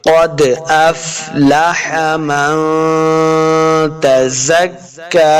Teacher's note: کاف کے اوپر کھڑی زبر ہے، اس کو 2 حرکات لمع کریں گے